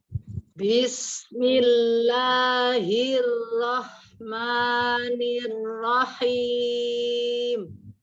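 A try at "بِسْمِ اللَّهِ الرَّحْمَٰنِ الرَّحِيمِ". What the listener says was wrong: B-nya jangan ngalir. Bis. Langsung.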